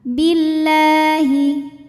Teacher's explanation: dibunyikan secara tarqik sebab huruf sebelumnya berbaris kasrah maka dibacanya tipis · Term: tarqiq